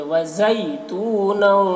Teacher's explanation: زا کی آواز دیکھیے سیٹی کی جیسی ہوتی ہے